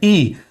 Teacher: ई के लिए जिव्हा का अग्र भाग जो है वह सक्रिय हो जाता है